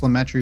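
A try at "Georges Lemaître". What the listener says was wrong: I know I'm nitpicky about it, but his name is. It's French. It's like George Saint Pierre. You don't pronounce the S. It's Georges Lemaitre. George Lemaitre.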